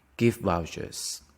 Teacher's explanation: vouchers the stress is on the first one